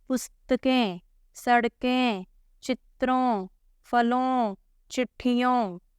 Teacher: मुंह एवं नाक दोनों से आ रही है साउंड